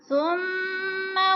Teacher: सुम्मा की मीम मुशद्दद है, सख्ती से पढ़ेंगे, जमा कर पढ़ेंगे। और सुम्मा को लंबा नहीं करेंगे क्योंकि ज़बर ज़ेर पेश को हरकत कहते हैं और ये ज़बर और हरकत वाला लफ्ज़ लंबा नहीं होता।